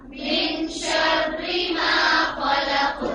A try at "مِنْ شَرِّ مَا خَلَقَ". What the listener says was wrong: را کے نیچے جب بھی زیر آتی ہے تو را باریک پڑھی جاتی ہے. من شرری نہیں پڑھیں گے, من شرری, ری نہیں پڑھیں گے.